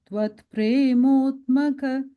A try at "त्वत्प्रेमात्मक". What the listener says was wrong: the fourth line, tvat prematmaka. You said a mo there, it's a ma, prematmaka.